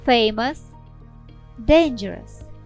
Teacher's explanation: ou іноді вимовляється як слабкий нейтральний звук е цей варіант характерний для ненаголошених складів